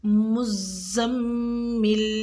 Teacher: لفظ المزمل میں زا کو سختی سے پڑھیں گے اور میم مشدد پر ملا کے اس پہ غنہ کریں گے، یعنی کہ مزمل، میم کو زا سے ملانا ہے اور زا کو میم سے ملانا ہے، اور جب ہم زا کو میم سے ملائیں گے تو ہم نے وہاں پہ میم مشدد پہ غنہ کرنا ہے، یعنی غنہ مین آواز کا ناک میں ٹھہرانا کچھ دیر کے لیے۔